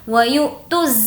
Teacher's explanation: یقیموا الصلاۃ یہاں پر بھی حمزہ ساکنہ حمزہ ہے اور اس کے اوپر جزم یعنی کہ ساکن ہے تو یہ ہو جائے گا حمزہ ساکنہ اور اس کا رول یہ ہے کہ حمزہ ساکنہ کے پڑھنے میں جھٹکا ہوتا ہے